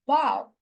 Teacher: We say about, because the A sound there is a schwa sound. So it's a reduced sound